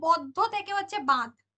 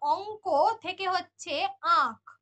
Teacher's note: ক্ষীণ হতে হতে ক্রমশ লোপ পাচ্ছে নাসিক্য ব্যঞ্জন, তার ফলে পরবর্তী স্বরধ্বনিতে একটা একটা বলা হয় ওটাকে একটা অনুরণন যোগ করে, ঠিক আছে। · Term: নাসিক্যী ভবন